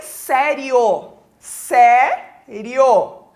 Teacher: o io é o ditongo crescente oral